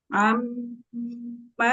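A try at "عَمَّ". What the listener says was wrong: Huruf ainnya dibuka lagi biar jangan kayak Hamzah. Amma, amma, buka lagi. Buka. Enggak, itu masih Hamzah. Naikin ke atas sedikit lagi, ke tengah tenggorokan. Coba latih dari huruf H kecil dulu. Ha, hi, hu. Diingetin di situ makrotnya, letaknya diingetin, letaknya di situ, rasakan di tenggorokannya. Ha, hi, hu. Nah, sama makrotnya dengan huruf ain.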